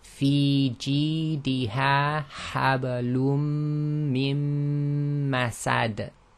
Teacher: we stop and there's a qalqala on that last dal. But essentially the noon sakin is not pronounced, the dal is actually recited as sakin.